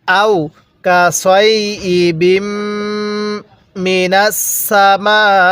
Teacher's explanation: কাসাইবি বা লাগবে মিমের সাথে কিভাবে পড়বো আও কাছাইবি মিনা সামা মিমের মধ্যে চার আলিফ টান